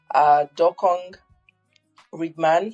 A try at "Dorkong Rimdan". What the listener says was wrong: it's Dorkong Rimdan. Yes, the G in Dorkong is silent.